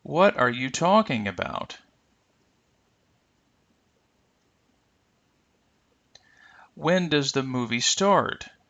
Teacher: questions these are the questions that we often call WH questions notice that the intonation will rise but perhaps not fall as much · Notice that the intonation will rise, but perhaps not fall as much, oftentimes because there may be another word that follows, but also because it's a question, and we want to distinguish it slightly from the normal sentence pattern. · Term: information questions, rising and slight falling intonation